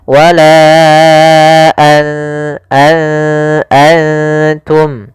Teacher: Jadi, setiap kali ada nun sukun atau tanwin (an, in, un), karena tanwin dan nun sukun terdengar sama, keduanya adalah bunyi 'n'. Ketika bertemu dengan 'ta', 'n' dikaburkan ke dalam ' ta', bergerak langsung ke makhraj huruf 'ta'. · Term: Ikhfa, ikhfa